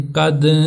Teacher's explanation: دال حروف قلقلہ میں سے ہے اور ساکن ہے، لہٰذا اس کے اوپر ہم نے قلقلہ کرنا، تو ہم پڑھیں گے قد، تھوڑی اس کی آواز کو جاری رکھیں گے۔ · दाल हरूफ कलकला में से है और साकिन है। लिहाजा इसके ऊपर हमने कलकला करना है। तो हम पढ़ेंगे कद थोड़ी इसकी आवाज को जारी रखेंगे।